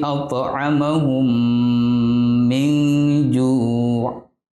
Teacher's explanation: Idgham mimi adalah salah satu hukum mim mati, yaitu apabila mim mati atau sukun bertemu dengan mim. Dan cara bacanya yaitu membaca huruf mim dengan ditasydid dan wajib didengungkan